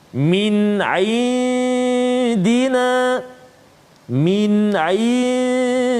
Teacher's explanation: nun mati bertemu dengan dal, maka hukum dia dengung dengan kadar 2 harakat